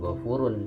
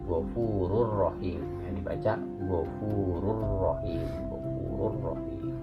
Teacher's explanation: Nah, huruf ro-nya ada domatainnya. Maka domatainnya itu langsung aja dimasukkan ke huruf ro, nggak dibaca, bukan ghafurun ya, tapi di sini bacanya Ghafurur Rahim ya, dibaca Ghafurur Rahim, Ghafurur Rahim langsung ya, seperti itu.